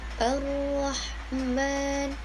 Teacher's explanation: Nah, yang kelima yaitu takrir, ujung lidahnya bergetar